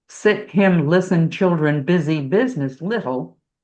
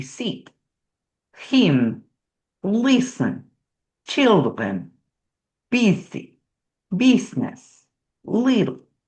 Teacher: the Russians have no short I. A lot of other languages don't either. They will substitute the E.